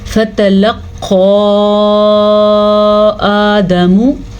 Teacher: فا زبر فا، تا زبر تا، فتا، اس سے زیادہ لمبا نہیں کریں گے۔ جبکہ قاف کے اوپر مد ہے تو اس مد کو ہم تقریباً 2 سے 3 سیکنڈ تک لمبا کریں گے۔ اس مد کی مقدار 2.5 سے 3 الفات کے برابر ہے۔